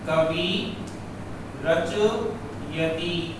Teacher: विसर्ग हट जाता है तथा विसर्ग के पहले वाले स्वर को दीर्घ हो जाता है। सूत्र कहता है कि विसर्ग के बाद में यदि रै हो तो विसर्ग का लोप हो जाएगा, और जब विसर्ग हट जाएगा तो विसर्ग के पहले जो स्वर था उस स्वर को हम दीर्घ कर देंगे।